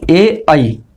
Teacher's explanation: ए आई कंठ से भी और तालु से भी, इन दोनों का उच्चारण स्थान है ए और आई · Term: कंठ तालु